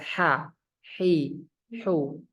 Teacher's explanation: mengalir dengan deras aliran napasnya itu keluar dengan deras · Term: sifat hams